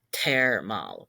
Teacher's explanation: We have TH, where the TH is making a TH sound. A th sound oftentimes will become just a T.